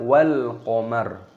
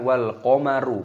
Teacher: Wa jumi'asy syamsu wal qamar, alif lam qamariyah, lamnya berharokat sukun maka dibaca wal qamar. Roknya berharokat dhammah ketika berhenti waqaf, maka dimatikan roknya dibaca wal qamar, bukan wal qamaru.